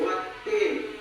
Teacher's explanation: Karena huruf lam bertemu ta, cara bacanya idgham atau masuk ke huruf ta.